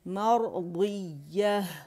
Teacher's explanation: راضیہ مرضیہ, مرضیہ, ضیہ, اور ہا جو ہے اس کا ہمس واضح کریں گے